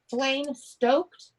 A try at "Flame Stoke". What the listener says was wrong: Yeah, no, Flame Stoke, no D.